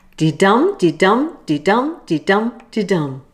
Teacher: Remember, the rhythm is 5 times di-dum. Di is unstressed and dum is stressed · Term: iambic pentameter